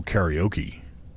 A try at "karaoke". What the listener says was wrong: Karaoke. not karaoke. It's karaoke. No, it's karaoke. Yeah, no I. There's no I. No I in karaoke.